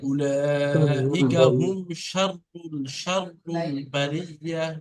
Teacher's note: শিনের উচ্চারণ একটু মোটা, তাহলে শয়ের মতো করে হবে